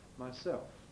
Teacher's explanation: not using the tongue tip that's what L vocalization is